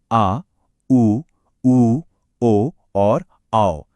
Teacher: जिन स्वरों को बोलते समय जीभ का पिछला हिस्सा एक्टिव होता है। मतलब ऊपर की तरफ उठता है उन्हें ही पश्च स्वर कहा जाता है।